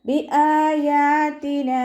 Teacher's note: അഖ്സൽ ഹൽക്കിൽ നിന്നാണ് ഹംസ വരുന്നത്. സൗണ്ടിനെ വ്യക്തമാക്കി കൊടുക്കുക. യാഇൻ്റെ കൂടെ അലിഫ് സ്വഗീറ വന്നു, 2 കൗണ്ട് നീട്ടിക്കൊടുക്കുക.